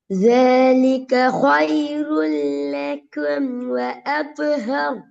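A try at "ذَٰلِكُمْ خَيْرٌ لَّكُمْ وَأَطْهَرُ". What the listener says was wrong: ராவ குறைக்கூடாது. ரா கொஞ்சம் குறைஞ்சிட்டு.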